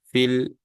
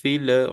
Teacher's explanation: janganlah kita lepas lam ini ya Sebab Dia bukanlah huruf Qalqalah jadi kita pegang fil filu fil bukan filu fil tak betul